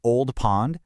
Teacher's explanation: Hear that long O sound in Old Pond? It's this open, kind of round sound.